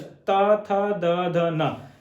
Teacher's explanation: दांतों में टच, दांतों में हल्का सा टच, ता, था, दा, धा, ना, जीभ टच हो जाएगी।